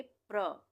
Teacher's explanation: यहाँ पे हम प को आधा पढ़ेंगे और र को पूरा पढ़ेंगे।